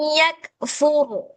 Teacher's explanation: Nah, yang ini r sukun. Kemudian sebelumnya ada huruf fa, ada huruf fa berbaris dommah, maka ro tadi dibaca tafkhim